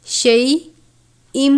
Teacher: تنوین ہے، اس کے بعد میم مشدد ہے، تنوین کو یعنی شیئن نہیں پڑھنا بلکہ شیئم پڑھیں گے میم کی آواز کے ساتھ ، شیئم، میم مشدد پر غنہ کریں گے، مما، یہاں پر